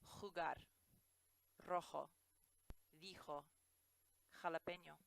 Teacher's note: The letter J in Spanish does sound like an H, but it's actually a little bit harsher than we say it in English. For example, jalapeno.